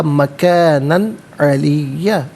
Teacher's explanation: وَرَفَعْنَاهُ مَكَانًا عَلِيًّا، مکانن میں نون پر دو زبر کی تنوین، اس کے بعد حرف علقی عین آ رہا ہے، تو تنوین کو یہاں پر بغیر غنے کے اور بغیر اخفاء کے پڑھیں گے، اظہار کے ساتھ پڑھا جائے گا۔